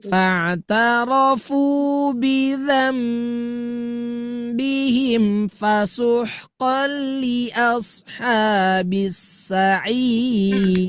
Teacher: huruf ada nun sukun bertemu ba disebut dengan iqlab, harus ditahan.